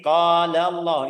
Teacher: Kalau sebelumnya fathah, dhammah, sebelum kata Allah ada harakat fathah atau dhammah, sudah ucapan lafzul jalalah lamnya tebal.